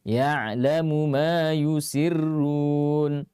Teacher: tidak dibaca dengan meleburkan mim yang pertama ke dalam mim yang kedua. Ya, karena itu berkaitan dengan qiraah yang lain. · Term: izhar